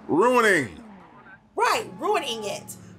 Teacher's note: so much emphasis on the end i didn't add extra syllables you put extra emphasis on the ing